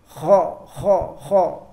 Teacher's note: Kalau huruf kha itu bacanya kita karena lidah kita naik ke atas jadinya seperti orang ngorok gitu.